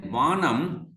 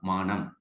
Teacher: labiodental Va in the word initial position, it changed into bilabial Ma